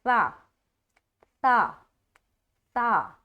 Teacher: सा की अदायगी नरमी के साथ बगैर सीटी के करना है